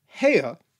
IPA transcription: he:ə